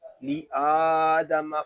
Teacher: لِآدَمَ فَسَجَدُوا إِلَّا إِبْلِيسَ، یہاں لام حمزہ کو ایک الف تک کھینچ کر پڑھیں گے کیونکہ یہاں کھڑا زبر ہے